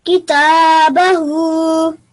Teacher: you made sure that your tha and your ha were equally long, which is 2 seconds